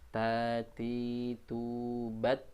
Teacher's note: Yaitu huruf ta, dal, dan to, ya. Ta dari ujung lidah bertemu dengan gusi depan bagian atas